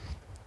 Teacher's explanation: میم ساکن کے بعد حمزہ آیا ہوا ہے تو یہاں پر بھی اظہار شفوی ہو رہا ہے،